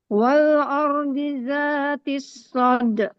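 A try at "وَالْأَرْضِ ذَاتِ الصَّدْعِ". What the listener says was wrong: Jelaskan ainnya. Soda. Soda. Soda.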